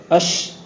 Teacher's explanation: اش جب بولتے ہیں تو آواز کے پھیلاؤ کے ساتھ ساتھ ہوا کا نکلنا بھی تھوڑا تھوڑا محسوس ہوتا ہے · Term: سانس کا جاری ہونا